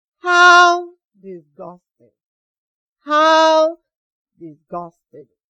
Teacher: You notice that my voice went down at the end of this exclamation. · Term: falling tone